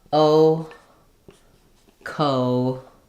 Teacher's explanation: I start rounded, a little more open, and then I lift. · So the O diphthong is a back vowel.